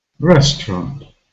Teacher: So the first syllable is stressed. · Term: stressed vowel sound